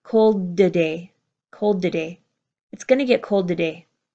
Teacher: because of the D at the end of cold, the T at the beginning of today blends into, it links into the D before.